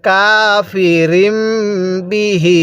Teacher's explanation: ওই মিমটিকে গুন্নাহ করে পড়বেন পূর্বের হরফের সাথে মিলিয়ে গুন্নাহ করে পড়তে হবে · শব্দটা কাফিরিম, রকে মিমের সাথে লাগাবো